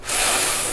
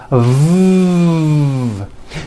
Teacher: here in your throat are vibrating and making a sound so the f sound is unvoiced and sounds like this and the v sound is voiced and sounds like this